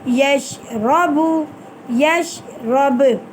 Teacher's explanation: آگے چلیں بچوں، یا شین زبر یش، یا کو شین ساکن کے ساتھ ملائیں گے اور آرام سے پڑھیں گے، رو زبر رو، یش رو۔ یہاں پر رو کے اوپر زبر آ گیا، اس رو کو ہم پر یعنی موٹا کر کے پڑھیں گے